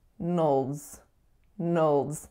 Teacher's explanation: And then the final syllable is nulls, nulls. So a schwa going right into that dark L.